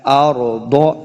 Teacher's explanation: ضاد بھی حروف مستعلیہ سے ہے، اس کو موٹا پڑھنا ہے